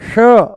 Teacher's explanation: जैसे ही हम बोलते हैं श जैसे ही बोलते हैं हम श मूर्धा ऊपर से बोला जाता है श। जीभ को थोड़ा सा ऊपर घुमा के तालू से लगा के बोला जाता है।